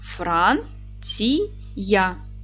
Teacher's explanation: наголос буде падати на перший склад